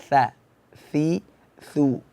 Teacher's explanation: makhrajnya ujung lidah e berada di bawah gigi seri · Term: huruf tsa